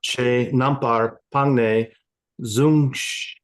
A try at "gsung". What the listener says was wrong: Sung. No Z. Low tone F.